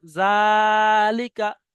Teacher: জালটা কিন্তু 1 আলিফ পরিমাণ টান, আলিফে মাদ্দার সমান। আর বাকি লামের নিচে জের আছে, কাফের উপরে জবর আছে, এই দুটো হারাকাতের পর তাড়াতাড়ি পড়তে হবে। · সর্বপ্রথমে যে জালটা আছে জালটা কিন্তু এক আলিফ পরিমাণ টান আলিফে মাদ্দার সমান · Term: খাড়া জাবার